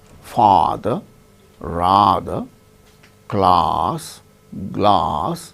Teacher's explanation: we say ah as in father rather class glass like that the tongue goes down then cavity is totally open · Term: half open